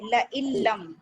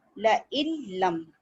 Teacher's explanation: अच्छा अब जो हम, हाँ अब हेडिंग को देखिए, इदगाम ताम, ताम मतलब मुकम्मल, ये इदगाम मुकम्मल, नून मिल गया लाम में, अपना वजूद अपना एग्जिस्टेंस खत्म कर दिया, ठीक है, कोई नून नहीं है, और ये हमजा किससे मिल गया, लाम से, ठीक है, ल इल्लम, और इसमें टाइम एक अलिफ के बराबर भी नहीं दे रहे, ल इल, और ये कसरा है, ला इल्म।